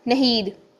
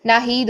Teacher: अब हम इसको अलिफ को नहीं पढ़ते हैं, नून की ज़बर अकेली पढ़ देते हैं, तो बन जाएगा नहीद